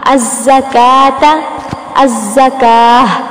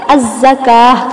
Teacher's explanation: کاف پر چونکہ کھڑی زبر ہے تو لمبا کرتے ہوئے ہا کی آواز نکالیں گے